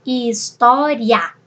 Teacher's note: Porque o i é semivogal e o a é vogal.